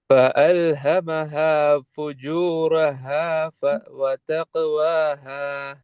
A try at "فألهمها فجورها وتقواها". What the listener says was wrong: வ வ வ வ என்ன அந்த ரிப்பீட் இல்லாம அழகா ராகம் எடுத்து வந்து போகும்.